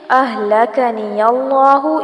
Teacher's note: اہلکنی اللہ یہاں پر لام اور کاف کی زبر کو لمبا نہیں کرنا اور آگے اس میں جلالہ پر کیا جائے گا کیونکہ اس سے پہلے یا کے اوپر زبر آ رہی ہے